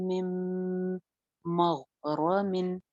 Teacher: गैन मोटा पढ़ेंगे, रॉ भी मोटी है, और आगे मिन है, लेकिन तनवीन के बाद नेक्स्ट लेटर मीम आ रहा है, तो अगेन यहाँ पे इदगाम हो रहा है।